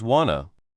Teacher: The t sound at the end of want often disappears and to gets made shorter. So want to becomes wanna.